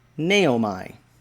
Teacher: the accent there is on the first syllable and it is a long a and then it has a long o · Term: self-pronouncing text